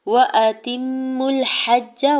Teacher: وَأَتِمُّوا الْحَجَّ، واو کے زبر کو جلدی سے ادا کرنا ہے، حمزہ کے زبر کو بھی بغیر کھینچے ہوئے ادا کریں گے۔ تا کی زیر کو میم مشدد کے ساتھ ملاتے ہوئے غنہ کرنا ہے۔